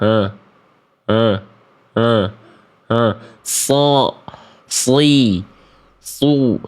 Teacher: makhraj huruf shad dari ujung lidah ke gigi saya di bawah